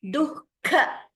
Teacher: Visarga followed by kha, dukkha janake. That Visarga should be heard. We shouldn't chant it as dukkha. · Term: Jihva Muliya